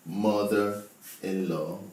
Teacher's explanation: Mother-in-law, the stress is on MO.